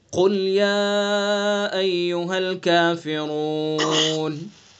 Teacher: जी काफ पुर होगा, चूँकि हरूफ मुस्तालिया में से।